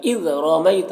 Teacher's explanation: اذ رمیت، را کے اوپر زبر ہے، را کو پر پڑھیں گے. میں یا لین ہے، اس سے نرم آواز کے ساتھ جلد پڑھیں گے